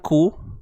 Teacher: Huruf K baris depan ku, muncul bibir lah sebab baris depan.